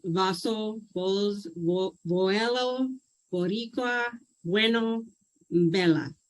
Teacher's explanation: it wasn't an English B sound. There was a softness to it as she was pronouncing it.